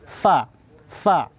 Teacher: bibir bawah bertemu dengan ujung dua gigi seri yang atas